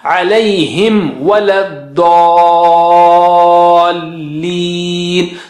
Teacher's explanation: recite with mim sakina naturally, but make sure that you merge the lips for mim sakina